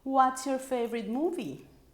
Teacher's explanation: Yes, at the end is a falling intonation, but it's kind of mixed because we go up at the very end and then down at the end